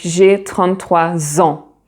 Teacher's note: So normally the final S of the noun 3, of the number 3 is silent. But as you have en following it, beginning with a vowel sound, so you do a linking sound and the S sounds like a Z.